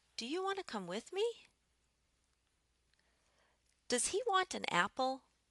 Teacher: for a question where I'm looking for an yes or no answer I'm ending with a higher tone than I started with · we would use a rising intonation with a yes-no question.